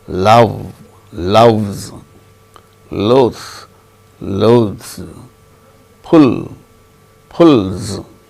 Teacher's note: the suffix plural marker is pronounced as z if the root ends in a voiced sound including all vowel sounds also, but other than z, zh and j.